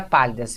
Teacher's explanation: Agora a gente tem a palavra pálidas. Veja, a última sílaba não é a tônica, nem a penúltima, é a antepenúltima sílaba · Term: proparoxítona